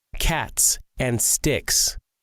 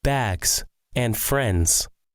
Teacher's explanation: Sometimes the plural S makes a S sound. Sometimes it makes a Z sound.